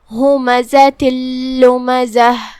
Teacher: ہم یہ تنوین کو لام میں داخل کر کے بغیر غنہ کے لیکن تشدید کے ساتھ یہ حکم کو ادا کریں گے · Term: ادغام بغیر غنہ